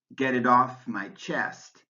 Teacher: in the phrasal verb get off in get it off my chest it's the second word that gets the stress